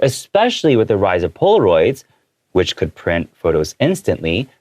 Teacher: my especially is a little higher